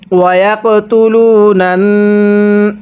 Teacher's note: এই নুনের উপর তাসদিদ থাকার কারণে নুনটা গুনাহ করে পড়ব, কারণ মিমে নুনে তাসদিদ গুনাহ করা ওয়াজিব।